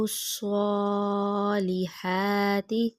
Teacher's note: صاد موٹا پڑھیں گے منہ گول کر کے